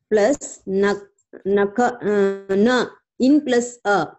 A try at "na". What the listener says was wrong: Again, you are saying in. It is na. Not in. It is not in. Gakara plus either you say nakara, or you can say nakara plus a. Okay, listen, you have to say gakara plus nakara plus a or gakara plus na. You have to say either one of these. You cannot say in, you cannot say in.